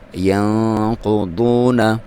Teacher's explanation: ینقضون، یہاں پہ نون پہ آپ نے اخفا کرنا ہے، ٹھیک ہے، آپ نے ناک میں سے آواز نکالنی ہے، اور ایک الف تک اس کی لمبائی 1 سیکنڈ تک اس کو آپ نے ناک میں رکھنا ہے۔ ینقضون، قاف اور ضاد حروف مستعلیہ میں سے ہیں، ان کو موٹا کر کے پڑھنا ہے، قاف کو بھی اور ضاد کو بھی، اور واو، یہاں پہ واو مدہ ہے۔